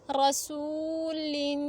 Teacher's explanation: را پہ زبر ہے، موٹا پڑھیں گے. سین پیش واو ساکن سو حروف مدہ ہے، ایک الف کی مقدار تک کھینچ کے پڑھیں گے